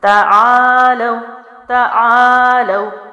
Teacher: پڑی حرکت جلدی چھوڑی، الف مد لمبا کیا، لام واو حروف لین جلدی پڑھا